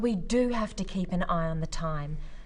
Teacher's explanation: notice the emphasis on the word do